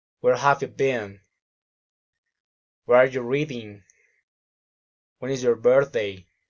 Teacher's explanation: Friendly interest, politeness, rising intonation.